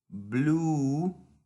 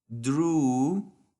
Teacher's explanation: Esta es una U alargada, ¿ok? En inglés se conoce como una U tensa.